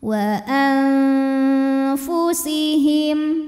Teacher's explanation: Karena ada nun sukun menghadapi huruf fa, maka nunnya dibunyikan samar-samar, siap-siap menuju makhraj huruf fa disertai dengung. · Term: ikhfa hakiki